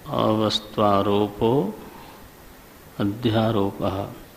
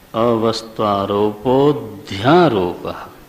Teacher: अ का उच्चारण फिर नहीं होना चाहिए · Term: अवग्रह